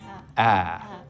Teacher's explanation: we make it with the tongue cupped down low and towards the front of the mouth like this ah okay ready for this here's the first move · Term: Trap vowel